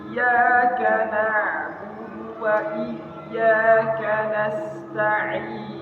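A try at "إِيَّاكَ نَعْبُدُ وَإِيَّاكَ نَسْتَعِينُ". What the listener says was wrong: Jangan tanggung kasrohnya, Ustaz. Ta'in. Iyyaka na'budu wa iyyaka nasta'in.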